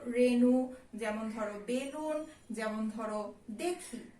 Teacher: তারপরে এ এর পরে যদি ইকার বা উকার থাকে তাহলে সেদিক থেকে এ ধ্বনির কি উচ্চারণ হয়, সাধারণ বা সংবৃত উচ্চারণ হয়